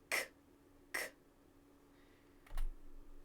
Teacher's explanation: the back of our tongue is up against the roof of the back of our mouths, and we push air through, no vocal cords.